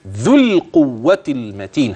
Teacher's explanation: ذو القوة المتين، يعني من الذال إلى اللام مباشرة